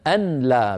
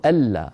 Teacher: على نية الإدغام، لأن العرب تدغم النون الساكنة في اللام بإجماع، لا يقول العربي أبدا أن لا بإظهار النون عند اللام، بل يقول ألا · ألا، يعني كتبت بإدغام النون في اللام بعدها على نية الإدغام، لأن العرب تدغم النون الساكنة في اللام بإجماع ، لا يقول العربي أبدا أن لا بإظهار النون عند اللام،